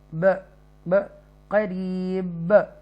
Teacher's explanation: एंड पर हुरूफ कलकला बा आ रहा है जज़म की सूरत में। वैसे तो बा दुम्मातैन के साथ है, बा के ऊपर डबल पेश है, बा दो पेश बुन के साथ, बुन की आवाज़ आनी चाहिए, लेकिन यहाँ पर हमने क्योंकि रुकना है तो हम यहाँ पर हम करीब करके हम पढ़ेंगे।